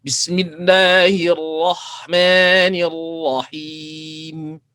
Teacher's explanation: Asalnya rahimi, 2 harakat saja, tapi kita waqafkan, kita berhentikan, kita baca panjang, boleh baca 2, boleh baca 4, boleh baca 6. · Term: mad arid disukun